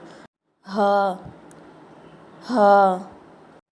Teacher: இந்த எழுத்து கீழ் தொண்டையிலிருந்து வெளியாகணும்.